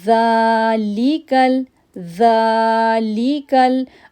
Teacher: اب ذا کو ہم 2 سیکنڈ کے لیے کھینچیں گے کیونکہ اس کے اوپر کھڑی زبر ہے۔